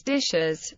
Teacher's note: in plurals such as dishes, a vowel is added before the s